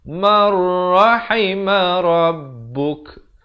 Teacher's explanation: Illa mar, di sini idgham bila gunnah, masuk tanpa dengung. Daripada man rahima jadi mar.